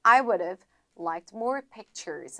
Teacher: 그렇게 읽게 되면 엄청나게 강조를 하게 되는 거예요. 근데 이제 일반적으로 지금 문장 읽었을 때에는 H를 탈락해 주셔서